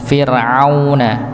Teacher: Di tengah tenggorokan. Sama seperti huruf ha. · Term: huruf ain